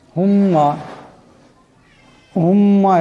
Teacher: মিম মুসাদ্দাদের এক আলিফ পরিমাণ গুন্না হবে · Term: গুণনা